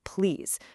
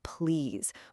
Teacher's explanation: this soft flowing please where the lips barely even touch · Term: butterfly touch